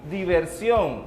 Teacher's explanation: Teníamos la palabra diversión. ¿Dónde lleva la mayor fuerza de voz? En on. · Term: palabra aguda